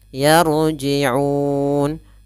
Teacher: ro nya ro sukun didahului fathah maka ro tebal